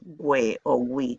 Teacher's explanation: Si le quitamos la U, en este caso suena je, ji, y ha de ponerse con este sonido ja, je, ji, jo, ju. Y cuando ponemos diéresis encima de la U, hay que pronunciar esa U, we o wi.